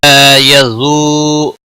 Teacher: لا الف مدہ ہے ایک الف کے برابر کھینچ کر پڑھیں گے